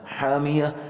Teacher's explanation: حامیہ, یہ سیم پچھلے الفاظوں کی طرح آخر میں ساکن کی صورت میں ہا جو ہے صرف پڑھا جائے گا اور تا ختم ہو جائے گا